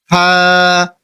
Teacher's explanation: সামনের উপরে দুই দাতের আগা নিচের ঠোটের পেট যেটা মাঝখান বরাবর সেখানে লাগিয়ে উচ্চারণ করবেন